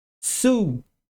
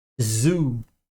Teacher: o s ou C quando o c tem som de s não é vozeado e o z é vozeado